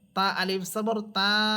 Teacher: এখানে জবরের পর খালি আলিফ আছে, একালিফ টেনে পড়তে হবে।